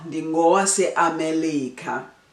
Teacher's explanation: you would replace the R with the L